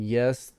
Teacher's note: it's another glide sound so for the yeah like in yes the air is kind of gliding over the middle of the tongue between the middle of the tongue and the palate